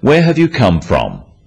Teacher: notice also the falling tone with these questions